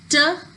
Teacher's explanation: the tongue is making a closure with the alveolar ridge, and then the air is escaping with a puff